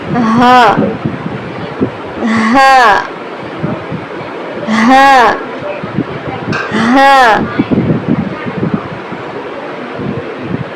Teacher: حلق کے آخری حصے سے نکالیں گے